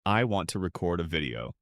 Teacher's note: The correct way is I want to record a video. Stress is on the first syllable.